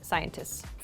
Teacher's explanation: scientists is very difficult to say in rapid speech, so we make it like a long S sound, scientists.